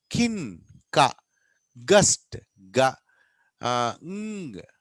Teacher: This makes the sound using the soft ప్యాలెట్ అంటే hard ప్యాలెట్ వెనకాల soft ప్యాలెట్ ఉంటుంది, అక్కడ మనం యూజ్ చేస్తాం. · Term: వీలార్